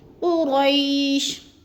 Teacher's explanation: قری قاف پر پڑھا جائے گا اور را کو بھی پر کر کے پڑھیں گے۔ قری کو زیادہ ہم نے کھینچنا نہیں ہے کیونکہ جیلین ہے۔